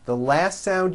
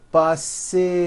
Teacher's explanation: The last sound you hear is that voiced Z.